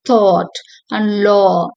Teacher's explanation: the tongue is positioned in the middle of the mouth but further back and the lips are rounded